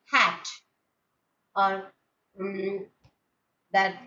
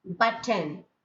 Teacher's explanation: unaspirated form, that is when it comes in the middle or in the end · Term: unaspirated T